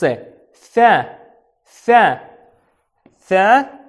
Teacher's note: кончик языка выходит между зубов